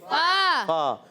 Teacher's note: فا کا مخرج اوپر والے دانتوں کے کنارے، نیچے والے ہونٹ کے تر حصے سے جب لگتے ہیں تو ادا ہوتا ہے فا